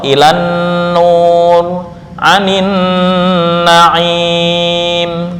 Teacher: Idgham lam syamsiyah ke dalam nun secara ijma atau kesepakatan para ulama